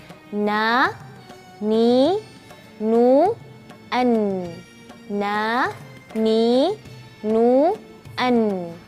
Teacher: huruf nun itu adalah dari ujung lidah bertemu bawah sedikit dari makhraj lam